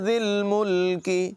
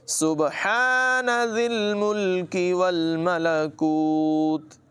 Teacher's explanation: زال کو لام کے ساتھ ملایا جائے گا اور زال میں سیٹی کی آواز پیدا نہ ہونے دیں۔